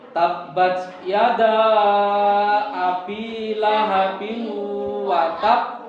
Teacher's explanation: Nah, semisal kira-kira cara membacanya bagaimana? Nah, cara pembacanya kita pantulkan ya dengan dua ketukan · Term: qalqalah